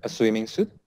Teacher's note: the intonation should be rising. A swimming suit, naik ya nadanya.